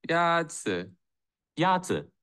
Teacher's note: the first tone is the high level tone